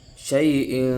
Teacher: تنوین پر بھی کیا ہو رہا ہے، غنہ خفیف ہو رہا ہے، غنہ ہو رہا ہے ناک میں